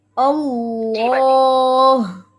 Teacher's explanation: اللہ سامنے نوک لگتی ہے, ٹھیک ہے, لیکن پیچھے سے فوراً اوپر اٹھتی ہے